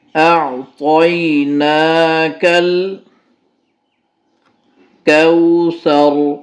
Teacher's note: وقف کرتے ہوئے را کو پر پڑھیں گے، موٹا پڑھا جائے گا، کیونکہ جہاں وقف کیا جاتا ہے وہاں آخری حرف کو ساکن کیا جاتا ہے، اور اس سے پہلے اگر زبر ہے را سے پہلے تو اس کو پر پڑھا جائے گا۔